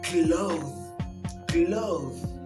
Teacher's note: clothes is having this hard th sound at the end, a sounding th